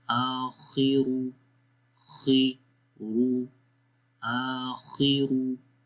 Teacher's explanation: حمزہ کو لمبا کریں گے، خا کو بھی موٹا پڑھیں گے، را کو بھی